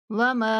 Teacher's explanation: मीम को 3 second तक खींच के पढ़ेंगे।